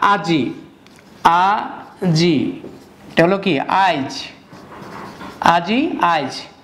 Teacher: যে ইটা পরে আসতো এটা আগে আসছে, তাহলে পরের রসিকার আগে উচ্চারণ হলো, এটাই অপিনিহিতি।